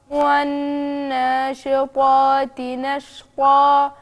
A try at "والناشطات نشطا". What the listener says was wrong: أنا عايز أسمع طاء عشان ما أحسهاش إنها قاف مع إن المخرجين ما لهمش علاقة بس كأن ودني سمع مش طاء